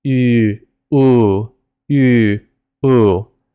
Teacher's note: u is at the front of your mouth and ooh is at the back. But your mouth shape literally doesn't change because they're both rounded vowels, meaning you round your lips to say them.